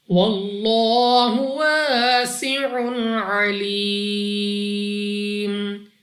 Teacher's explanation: لام اف اللہ سے پہلے حرف پر زبر تو اس لام اف اللہ کو بھی پر یعنی موٹا پڑھیں گے. الف سے پہلے زبر الف مدہ 2 سیکنڈ تک لمبا کرنا ہے. · جب وقف میں میم ساکن ہوگا تو یہاں پر ہمارے پاس مد عارض ہوگی، جس کی وجہ سے ہم نے اس کو 3 4 یا 5 سیکنڈ تک کھینچ کر پڑھنا ہوگا